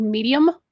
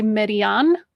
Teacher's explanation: words that end in English with an M, they will pronounce with an N when they speak it. So like, for instance, the English word medium, like a size, they'll say median because that's what it is in Spanish.